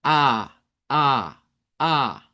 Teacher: note que es una vocal abierta, porque debemos de abrir nuestra mandíbula. De hecho, es de las más abiertas.